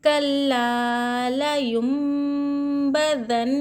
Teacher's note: نون ساکن کے بعد اگر میم آ رہا ہے کہیں پر بھی قرآن مجید میں نون ساکن کے بعد با آئے اور با کے اوپر چھوٹا سا میم آئے تو نون کو میم سے بدل کر پڑھنا چاہیے غنہ اور اخفا کے ساتھ. ٹھیک ہے، یہ نون سائلنٹ ہوگا.